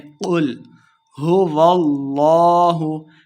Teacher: لفظ اللہ کا جو لام ہوتا ہے ہم نے اس کو موٹا پڑھنا ہے۔ لام کھڑی زبر لا، اسے 2 حرکات لمع کرنا ہے۔